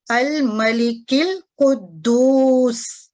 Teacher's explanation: تو جب ہم اس کو پہلے لفظ کو دوسرے کے ساتھ ملائیں گے تو یہ جو ساکت ہونے والا ہے، یہ حمزہ وصلی جو ہمارے پاس ہے، یہ پڑھا نہیں جائے گا